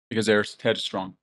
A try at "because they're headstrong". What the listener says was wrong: Can you make the word because more important? Make that cause longer because they're headstrong.